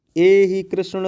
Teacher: प्लुत कैसे समझेंगे, कह रहे हैं कि जब किसी व्यक्ति को हम दूर से पुकारते हैं तो संबोधन पद का जो अंतिम वर्ण होता है उसमें 3 मात्रा का समय लगाकर बोलते हैं, उसे ही प्लुत स्वर कहते हैं।